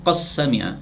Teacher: maka dalnya diidghamkan pada huruf sin, maka menjadi qas sami'a